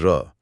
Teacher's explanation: जैसे र इसे प्रकंपित या लुंठित कहा गया है। इसे बोलते समय जीभ आगे पीछे कांपती है